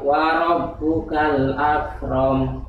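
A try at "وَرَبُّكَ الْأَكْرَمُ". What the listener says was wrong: Ya, hati-hati dengan kalimat ak. Ya, karena kalau nanti terlalu ini apa namanya bersih jadi akram. Akram. Ak boleh memang ada sifat hamas pada huruf kaf. Ak. Akram. Akram. Ya, lebih cenderung huruf k. Ketimbang hamasnya. Ketimbang hamasnya. Akram. Jadi ak haknya yang hamasnya terakhir. Akram. Jangan barengan. Ak ka ka kakiku ka ka kakiku bak bak ya wa rabbukal akram.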